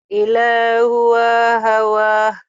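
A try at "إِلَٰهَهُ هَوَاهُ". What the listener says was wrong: Yang panjang lah. Hu sama wa.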